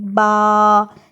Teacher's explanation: اب دونوں ہونٹوں کو جب ملائیں گے تو تب ادا ہوگا با۔ با، جب آپ دونوں ہونٹ ملا کے پڑھیں گے تو صحیح سے ادائیگی ہوگی با کی